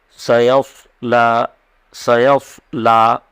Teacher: سیصلی یعنی سین بھی ہے اور صاد بھی ہے، تو سین کو ایک دم سادے انداز سے ادا کریں گے، صاد کو پر پڑھیں گے، یعنی منہ گول کر کے پڑھیں گے، ہونٹ گول ہوں گے